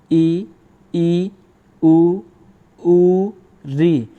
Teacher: जिन स्वरों के उच्चारण में मुख द्वार लगभग बंद रहता है उसे संवृत स्वर कहते हैं।